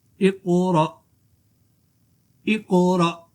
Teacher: جھٹکا بھی دینا حمزہ ساکن کو، لیکن اس سے پہلے جو قلقلہ حرف آ رہا ہے اس میں قلقلہ بھی ظاہر کرنا ہے